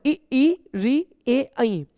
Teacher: ये 5 स्वर बच्चों जीभ के आगे के हिस्से से उच्चारित होते हैं, तो इनको हम अग्र स्वर कहेंगे।